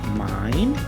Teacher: So the voice starts high, dips down, and then rises again. This tone can make your voice sound softer, more polite, or even unsettling when you're not completely finished with your idea. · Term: four rise